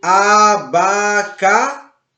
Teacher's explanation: Abacaxi não tem acento, mas você percebe que abacaxi, a sílaba mais forte é a xi, o xi. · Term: oxítona